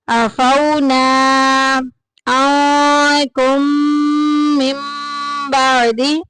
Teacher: मीम को मीम में मुदगम कर देंगे, मिला देंगे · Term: इदगाम शफी